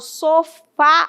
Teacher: O acento agudo, como eu havia falado no início da aula, indica que o som é para fora, é aberto, timbre aberto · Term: som aberto